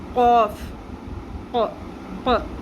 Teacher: قوف کو پر بھی پڑھنا ہے اور نرم تالو کے ساتھ زبان کی جڑ کو لگاتے ہوئے قوف ادا کرنا ہے ہم نے